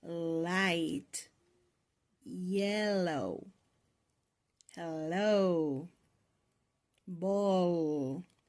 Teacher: la sound is voiced because the vocal cord produces vibration when you make the sound. · Now, how does the air move? This is a lateral and alveolar sound. So, the air escapes from both sides of your tongue. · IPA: /l/